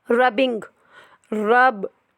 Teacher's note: लेकिन इसमें आय जो है वो आय का साउंड नहीं दे रहा, ए का साउंड दे रहा है। रबिंग, बी आ रहा है, तो ये वॉइस्ड है, इसमें आपके वोकल कॉर्ड्स जो हैं वो वाइब्रेट करते हैं।